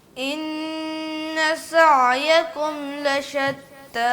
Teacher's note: بس سیٹی تھوڑی کم رہ گئی ہے